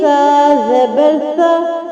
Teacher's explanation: سا کو آپ نے ادا کرنا تھا نرمی سے، کیونکہ سا میں سیٹی نہیں ہوتی